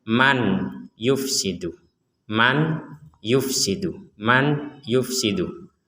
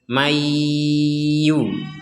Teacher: nun sukun ini dimasukkan ke ya jadi nun sukun dimasukkan ke ya